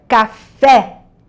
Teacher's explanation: As palavras oxítonas são aquelas que a última sílaba é tônica. Então, a palavra café tem a última sílaba mais forte.